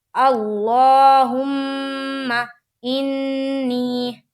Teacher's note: انی میں بھی نون کے اوپر تشدید ہے، تو میم اور نون کے اوپر جب تشدید ہو تو یہاں پر تھوڑی دیر آواز کو ناک میں روکیں گے